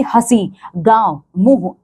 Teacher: तो इसका जब हम उच्चारण करते हैं ना अनुनासिक का तो जो हवा होती है ये हमारे नाक और मुख दोनों जगह से निकलती है। · जो हवा होती है ये हमारे नाक और मुख दोनों जगह से निकलती है। ठीक है, इसीलिए इसीलिए हम इसको चंद्र बिंदु कहते हैं।